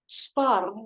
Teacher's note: So you can hear the R is a little bit rolled in Scottish pronunciation.